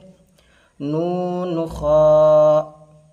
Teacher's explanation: ख ये पुर हरूफ है। इसको मोटा करके मुंह गोल करके अदा करना है।